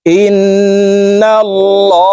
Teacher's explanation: আল্লাহ শব্দের আগের হরফে জবর আছে এই কারণে এই লামকে ল অর্থাৎ মোটা করে পড়বো · ইন ওয়াজিব গুন্নাহ হরকতের বামে নুনের উপরে তাসদিদ আছে এই কারণে হামজা তাশদি নুনের সাথে নাকের বাঁশি থেকে গুন্না করে পড়বো এই গুন্নাহকে ওয়াজিব গুন্নাহ বলা হয় হামজা নুন জের ইন নুন